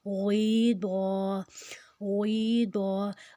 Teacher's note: غیضا، غیضا، اب دعات کے اوپر جو زبر ہے اس کو ہم نہیں لمبا کریں گے بالکل بھی، غائن جو ہے وہ موٹا ہے، یا کے اوپر جزم ہے، یا کا جزم پیچھے والی زیر کے ساتھ 2 حرکت لمبا ہو جائے گا۔ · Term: یائے مدہ